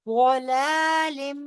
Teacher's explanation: فی ضلال، ضلال، ضاد، ضاد پورا پڑا جائے گا، فی ضلال، ضاد کو لمبا کرتے ہوئے لام جو ہے وہ موٹا نہیں ہوگا